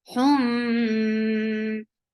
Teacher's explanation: this idgham is with gunna, and this gunna is akmal gunna